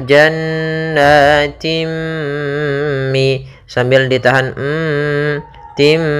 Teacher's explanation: apabila ada kasrotain bertemu dengan mim, maka kita masukkan tanwinnya ke mim